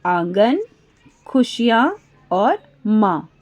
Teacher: चंद्र बिंदु वाले शब्द अनुनासिक हैं, नाक और मुंह दोनों से ध्वनि निकलती है